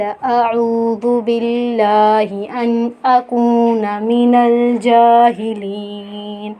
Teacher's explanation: ان اکون من الجاہلین، جیم کے اوپر کھڑا مد ہے تو کھڑے مد کو ہم ایک الف کی مقدار کھینچ کے پڑھیں گے۔ لین، یا مدہ کے بعد وقف ہو رہا ہے تو اسے ہم کھینچیں گے جاہلین۔ آگے پڑھیں گے قالوا ادع لنا ربک یبین لنا ما ہی، قالوا، قاف ہم کھینچیں گے، قالد ہے، قالوا نہیں ہے، قالد، دال پہ قلقلہ کریں گے، اور ربک یبین لنا ما ہی۔